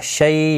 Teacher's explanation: شیء یا لین ہے، تھوڑا نرمی کے ساتھ کھینچ کر ادا کریں گے